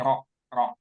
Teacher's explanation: bukan Ra tapi ro ro ya tebal ya